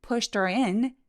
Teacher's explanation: push in 하면서 강세 주고 내려갔다 올라가기